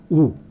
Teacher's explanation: હોઠ નજીક આવીને ગોળાકાર થાય તો આપણે બોલીએ છીએ ઉ. અને ઉ બોલીએ છીએ ત્યારે જીભ પાછળ જાય છે. જીભ પાછળ જાય એટલે ગળાથી જીભ સુધી અને જીભથી હોઠ સુધીના 2 અલગ અલગ પોલાણો રચાય છે.